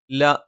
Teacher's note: നാവിന്റെ അറ്റം മേലെ മുൻപല്ലിന്റെ മോണയിൽ